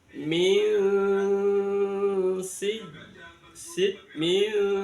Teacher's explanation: bunyi n pada min itu disamarkan antara tempatnya nun sama tempatnya sin. Mil sid mil, jadi di tengah-tengah ada nun sama sin. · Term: ikhfa haqiqi